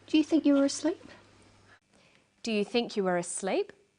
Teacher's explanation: her voice goes up at the end of the sentence we call this a rising tone